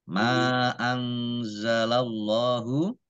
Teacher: nun sukun bertemu dengan huruf zain huruf za dibaca samar-samar ya, bacaan ikhfa